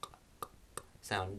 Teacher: It's produced by the back of the tongue and the further, the rearmost part of the mouth, the closest to the uvula